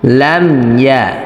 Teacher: লাম মিম জবর লাম, ইয়া জবর ইয়া, লাম ইয়া। এখানে অনেকে লামিয়া লামিয়া এইভাবে বলে থাকে, অর্থাৎ মিমে জের চলে আসে এরকম একটা ভাব থাকে